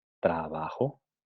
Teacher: como aquí no tenemos ni M, antes de la B no tenemos ni M, ni N, ni está en posición inicial absoluta, entonces se va a transcribir como una B fricativa